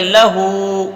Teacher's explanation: تو لام پہ زبر نہیں کھینچنا ہے. ہاں پہ الٹا پیش ہے تو الٹا پیش میں بتایا تھا کہ حروف مدہ قائم مقام ہوتا ہے تو ایک الف کے برابر کھینچ کے پڑھیں گے.